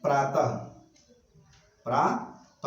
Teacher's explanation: विसर्ग का जब भी उच्चारण करते हैं तो उसका जो उच्चारण होता है वो ह को दर्शाता है। जैसे प्रातः, प्रातः, अब इसका उच्चारण कीजिए, देखिए प्रातः ह आ रहा है।